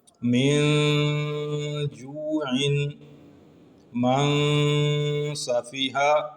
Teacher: یہاں پر نون ساکن پہلے کلمے میں اور جیم اور سین جو حروف اخفاء ہیں وہ دوسرے کلمے میں آئے تو اخفا کیا ہم نے۔